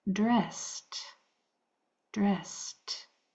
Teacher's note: that e d is going to make its voiceless sound, which sounds like a t.